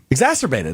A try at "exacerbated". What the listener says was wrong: There's a C. I think you're missing the C.